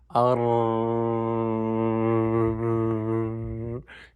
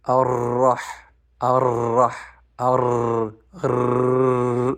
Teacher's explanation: the sound is sneaking through that tiny space between the front part of the tongue and the roof of the mouth, particularly the end of the gum ridge.